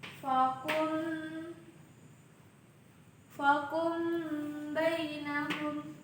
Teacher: hukum bacaan ikhfa syafawi, di mana mim sukun bertemu dengan ba yang dibaca dengung